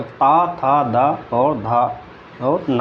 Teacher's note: ता का उच्चारण स्थान दंत है